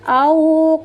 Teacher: Cara membacanya dilembut dan dilunakkan suaranya. Kemudian ketika melafalkan wau sukun dengan memenyongkan kedua bibir tanpa merapatkan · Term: harfulin